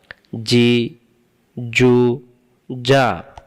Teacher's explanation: জিম অক্ষর জিহ্বার মাঝখান থেকে শক্ত করে পড়তে হয়